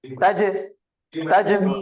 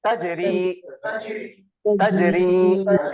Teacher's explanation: جیم ساکن ہے تو قلقلہ کا قاعدہ ہوگا